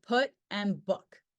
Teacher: oo is produced with the tongue position near close to Mid height and back in the mouth with rounded lips